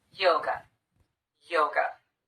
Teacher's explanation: the second syllable is unstressed we replace the letter A with the unstressed vowel the uh sound and we get away from that syllable as quickly as we can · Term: schwa